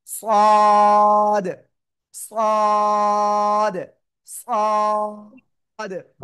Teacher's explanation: জিহ্বার আগা, সামনে নিচে দুই দাঁতের পেট ও আগার সাথে লাগিয়ে একটু মোটা আওয়াজে উচ্চারণ করবেন।